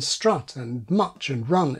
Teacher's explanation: In the north of England, the vowel in put is also still the vowel in strut and much and run